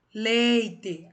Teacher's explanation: a sílaba tônica é o lei